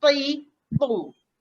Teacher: Dia disebabkan sifat huruf dia yang dipanggil isti'la. Isti'la tu pangkal lidah terangkat ya. Belakang lidah kena terangkat nak bunyikannya, dan satu lagi sifat huruf dia dipanggil itba'. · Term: huruf ta